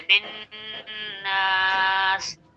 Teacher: बिन नास नहीं कहेंगे, गुन्ना करेंगे, बिन नास, नास पे खींचेंगे, क्यों, अलिफ से पहले जबर अलिफ मद्दा है, और बिन पे गुन्ना इसलिए करेंगे, नून मुशद्दद है, तो नून के ऊपर जब तशदीद आता है तो एक अलिफ के बराबर गुन्ना होता है